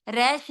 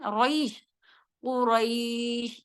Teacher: रा हैवी किया जाएगा, आगे या लीन है, रैश नहीं है, रईश, कुरैश, इस तरह से।